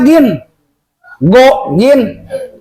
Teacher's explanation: Nah lighhairillah gin dari mana? Gin go gin dari tenggorokan bagian atas